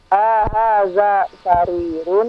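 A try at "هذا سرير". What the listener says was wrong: Ingat, A-nya pendek. Jangan dipanjangkan.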